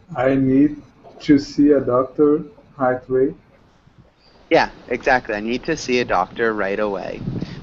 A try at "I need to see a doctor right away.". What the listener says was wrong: I need to see a doctor right away. Make sure you really pronounce that R sound. It sounded a lot like height, but that was good.